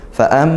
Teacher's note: maka baca deng miman tumma nunudidah mim dan Nun yang bertasydid nah ini mim bertasydid kita baca ghunah dengung